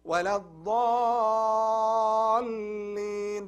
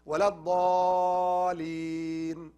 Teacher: when you join the lam shadda, you have to hold this lam like 2 count because it has shadda.